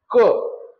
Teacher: योग्य उत्तर आहे कंठ्य वर्ण, कंठातून निघणारे वर्ण क